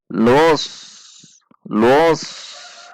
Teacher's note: Jadi, itu dibaca langsung ke dalam huruf shad. Los, lus, dengan mengangkat bagian belakang lidah karena sifat huruf shad